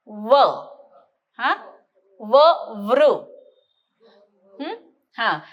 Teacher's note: बरोबर आहे दंत असा तो व आहे हो की नाही तर खालचा ओठ वरच्या दाताच्या खाली घालायचा